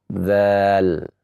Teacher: Sehingga kita membaca dal. Dan huruf zal yang bertemu antara ujung lidah dengan ujung gigi seri yang atas